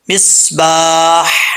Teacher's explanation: آگے ہا کے آگے الف ہے، ایک الف کی مقدار اس کو لمبا کرنا ہے۔ ہا یہ بھاری ساؤنڈ کے ساتھ، اس کا تعلق سینے کے ساتھ ہے، حلق کے ساتھ نہیں ہے، ٹھیک ہے۔ اور جب یہاں پہ وقف کریں گے تو ہا ساکن ہو جائے گا، مصباح۔